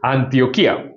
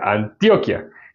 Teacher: aguda que tiene acento en la I, Antioquía, siendo la última sílaba una sola, porque hay diptongo.